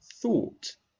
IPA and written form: θɔːt (thought)